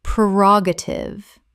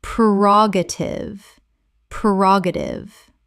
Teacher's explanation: four syllables with the stress on the second